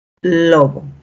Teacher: el punto de articulación se va a dar entre la lengua y justamente los alveolos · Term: alveolares